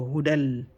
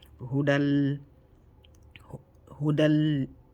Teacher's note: no gunna means no nasal sound, and noon is given nasal sound, so no nasal sound, no noon. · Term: idgham without gunna